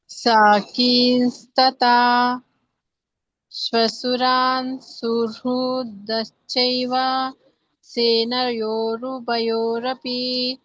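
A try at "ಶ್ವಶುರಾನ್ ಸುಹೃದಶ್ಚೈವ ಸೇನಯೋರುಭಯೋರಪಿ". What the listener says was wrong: ಸ್ವಲ್ಪ ಒತ್ತುಗಳನ್ನ ನೋಡಿ ಇದು ಮಹಾಪ್ರಾಣಗಳನ್ನ ಮತ್ತೆ ದೀರ್ಘಗಳನ್ನ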